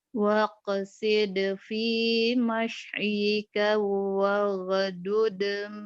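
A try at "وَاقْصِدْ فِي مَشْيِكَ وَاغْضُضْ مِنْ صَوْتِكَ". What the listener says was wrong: masjika waghdud min sautik. Agak cepat di sini ya. Gak ada madnya. Madnya cuma di fi tuh. Gak ada yang panjang. Cuman fi doang ini.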